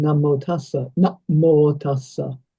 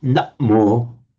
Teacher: That's not actually a doubling of the M. That's a glottal stop.